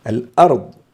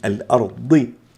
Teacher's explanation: الضاد مع أنها مكسورة فتفخيمها هنا نسبي